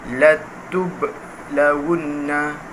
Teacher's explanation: di mana ba itu adalah qalqalah sughra, maka ia dilantunkan bacaannya